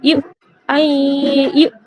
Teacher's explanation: হামজা সাকিন যুক্ত হামজা আছে, তাই একটু ঝটকা দিয়ে পড়তে হবে